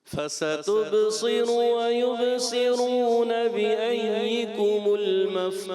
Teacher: سین تھوڑا موٹا ہوتا ہوا محسوس ہو رہا ہے. آپ کوشش کریں سین کو باریک رکھیں شروع میں